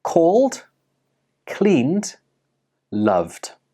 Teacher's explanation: Even though these words are spelt with an ed, they do not end with an id sound. Instead, they end with the d sound. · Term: d ending sound